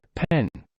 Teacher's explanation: one's lips close to form the p sound, and upon releasing the closure, a puff of air is expelled with the release of the p